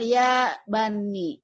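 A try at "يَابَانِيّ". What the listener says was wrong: Yabaninya panjang. Betul, Ibu. Ulang lagi, Ibu.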